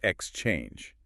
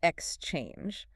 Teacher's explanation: You have to sort of slide over the X and land hard on the change.